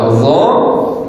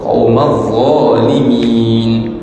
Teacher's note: Indallah, wallahu la yahdil qawma adh-dhalimin. Adh, hujung lidah berada di antara dua gigi